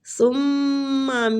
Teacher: ثم، میم مشدد ہے، غنہ کریں گے